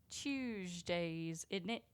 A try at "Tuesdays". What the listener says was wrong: No. No, it's not Tuesday. It sounds like you're saying Tuesday. No, like a Charleston chew. It sounds like you're saying choose. Like you chew on something.